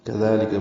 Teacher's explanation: كذلك میں کاف ذال لام، کاف باریک ہے · ذال کو دو حرکات لمبا کرنا ہے